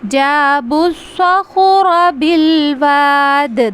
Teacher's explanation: کو پڑھیں گے جابوا الصخر تو یہ سین کی آواز ہے، صخر ہمیں پر کر کے موٹا کر کے صاد کی صفت کو خیال رکھتے ہوئے اس کو ادا کرنا ہے ، جابوا الصخر بالواد، دال پہ قلقلہ کریں گے، ٹھیک ہے۔